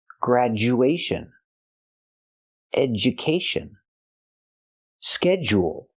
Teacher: With all these words, the du makes the j sound.